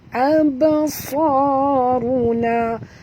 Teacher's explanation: Ra tarkhim, ya. Absaruna, ba di sini dia mati di tengah-tengah kalimah, kita kena lantunkan dia dengan lantunan kecil, qalqalah sughra